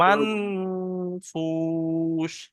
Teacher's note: সাকিন তানমিনের পরে হরফে ইকফা 15টির ফা এসছে, তাই নুন সাকিনের আওয়াজকে নাকে তুলে একালিপ পরিমাণ গুণনা করে পড়তে হবে। তাহলে একালিপে মান ফুস, মান বলে গুণনা করতে হবে।